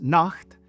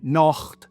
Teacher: Nacht in High German and Nacht in Swiss German. It's a much harder guttural ch sound.